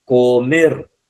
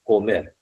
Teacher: ¿Dónde está la mayor fuerza de voz? ¿Dónde está el énfasis? En la última sílaba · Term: el prosódico